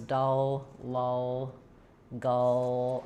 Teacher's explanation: I don't recommend that just generally for dark L, but in these words, dull, lull, gull, I feel that my tongue is pulled back to achieve that combination of that vowel with that dark L